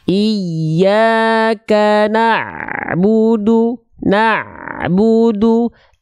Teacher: Sip, tinggal di na'budunya jangan terhenti. Ain punya sifat namanya tawasud. Tawasud sedikit mengalir suaranya.